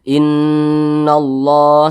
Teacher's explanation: Allah ada Alif kecil maka kalimat Allah dibaca panjang Mad thii panjangnya dua harakat atau kira-kira dua ketukan